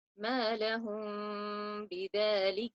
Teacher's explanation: we will have to conceal the sound of the Meem in the Ba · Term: ikhfa